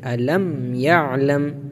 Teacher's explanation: میم ساکن کے بعد یہاں پر نہ با ہے اور نہ میم بلکہ یا ہے، تو میم کو ظاہر کریں گے ، الم یعلم، بہت سے لوگ اس کو یعلم بولتے ہیں، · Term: اظہار شفوی